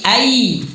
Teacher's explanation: Cara bacanya memasukkan suara nunah ke huruf di depan beserta dengan ini huruf ya. Berarti bukan lagi an ya, tapi ai masukkan ke ya tapi ditahan dengan dengung. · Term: idghamhunah